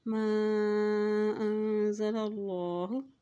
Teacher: ان الذین یکتمون ما انزل اللہ، یہاں دیکھیں حمزہ کے اوپر مد ہے اس لیے اس کو لمبا کر کے ادا کریں گے، اور اللہ کے نام سے پہلے دیکھیں یہاں پر لام کے اوپر زبر ہے، اللہ کے نام سے پہلے جب بھی زبر آ جاتے ہے تو اللہ کا نام موٹا ادا کیا جاتا ہے